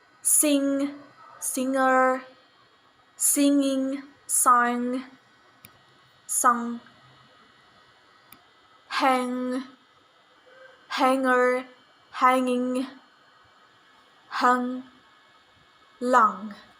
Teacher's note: voiced velar nasal sound ng